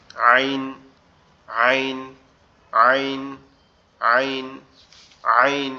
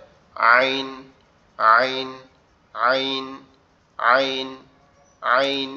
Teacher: গলা চেপে আইন আইন আইন আইন আইন এরকম ভাবে ঠিক আছে গলা একটু চাপ হবে উচ্চারিত হবে